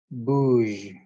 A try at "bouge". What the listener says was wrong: Parfait.